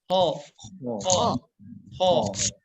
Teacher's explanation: huruf kho ini ketika membacanya pangkal lidah kita ke atas